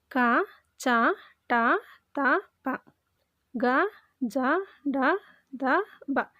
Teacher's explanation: ಕಡಿಮೆ ಉಸಿರಿನಿಂದ ಉಚ್ಚರಿಸಲ್ಪಡುವ ಅಕ್ಷರಗಳನ್ನ ನಾವು ಅಲ್ಪಪ್ರಾಣ ಅಂತ ಕರೀತೀವಿ